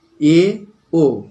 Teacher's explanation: সর্বোচ্চ উচ্চতায় না গিয়ে জিহ্বাটা একটু নিচের দিকে নেমে উচ্চারিত হলে তাকে বলে উচ্চ মধ্য স্বরধ্বনি